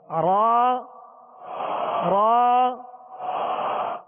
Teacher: تو پشت زبان قریب سرا زبان کھردرے تالو سے جب لگے تو را ادا ہوتی ہے، اور اس میں خود بخود مشابہت تکرار بھی پیدا ہوگی اور را صحیح درستی کے ساتھ ادا ہوگی.